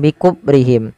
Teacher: Him ada bacaan syafawi dengan jelas mimnya.